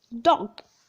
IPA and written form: dɒg (dog)